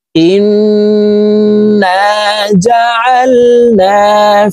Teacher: নুনের সাথে নাকের বাসি থেকে গুন্নাহ করে পড়ব। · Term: ওয়াজিব গুন্নাহ